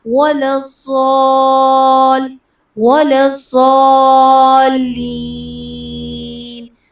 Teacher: مخرج کو زا سے یا زال سے تبدیل نہیں کرنا بلکہ ضاد کو پر کر کے پڑھنا ہے، اور زبان کی کروٹ اوپر داڑوں سے لگے گی